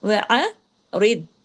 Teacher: را باریک، ضاد ہیوی لیکن کلکلا نہیں ہو ، وعرض لیکن بیچ میں وقفہ بھی نہ ہو، انل، انل،